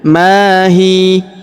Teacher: Perhatikan huruf ma. Kita panjangkan dua harakat karena alif di depannya mahi. Kemudian huruf ya langsung kita sukunkan ya.